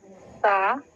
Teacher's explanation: سا ہمارے اوپر کے دانتوں اور زبان کی کنارے حصے سے ادا ہوتی ہے